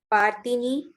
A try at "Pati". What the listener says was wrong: Pati. This is not ni. This is underlined here. For the hyphen. Pati.